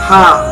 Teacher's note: Yang keenam yaitu huruf H, pelafalannya H. Makhorijul huruf H terdapat pada tenggorokan bagian tengah. Sedangkan sifatul huruf H terdiri dari 5 sifat, yaitu hames, nafas berhembus.